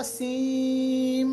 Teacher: मगर आप देखिएगा मैंने इसको सीन नहीं पढ़ा, मैंने इसको पढ़ा सीम, यानी नून को कंप्लीटली मैंने मीम के साथ मिलाया